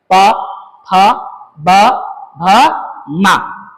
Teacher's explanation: दोनों के दोनों होट ऊपर वाला और नीचे वाला दोनों होट सटेगा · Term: होठ